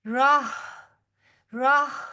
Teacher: ہا کی سانس باہر کی طرف نکلے گی